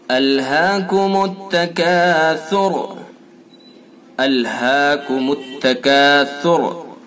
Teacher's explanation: سا کو نرمی کے ساتھ پڑھیں گے اور یہ را جو ہے اس را کو ہم پر کریں گے۔ یہ را چاہے وف کریں تب بھی پر ہوگی اور وصل کریں تب بھی پر ہوگی۔